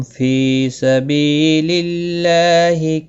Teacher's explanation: اللہ کا لام زیر کی وجہ سے باریک پڑھا جائے گا اور اس کے اوپر کھڑی زبر بھی ہے، ایک الف کے برابر کھینچ کر پڑھیں گے۔